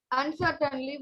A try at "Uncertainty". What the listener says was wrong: Uncertainty, it is T-Y.